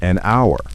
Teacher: The word our H O U R starts with a consonant H, but the H is silent. The first sound is, a vowel sound.